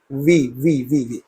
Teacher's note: the upper teeth are touching the lower lip when you pronounce that alphabet